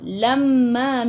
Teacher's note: mim ada sabdu tekan ke dalam mim dan dengan 2 harakat wajibul gunnah. Wajibul gunnah.